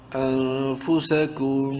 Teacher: میم اور نون دونوں میں، میم میں غنہ ہوگا اور نون میں اخفا